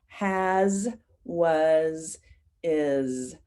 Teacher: I notice all of those words have an S at the end, but it sounds like Z